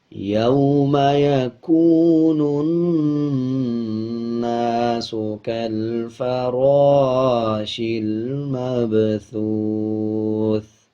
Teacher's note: جب وقف کریں گے یعنی آیت کمپلیٹ کریں گے تو ثا کی آواز کو آدھا پڑھیں گے اور زیر کو سائلنٹ کر دیں گے